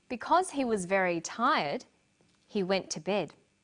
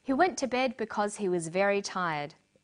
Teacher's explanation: Because he was very tired, he went to bed. Notice the pause. He went to bed because he was very tired. There's no pause.